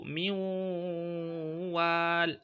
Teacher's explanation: You see, we did not pronounce the nun. We've inserted the nun into the wa, pronouncing the wa with shadda and ghunnah. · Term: idgham with ghunnah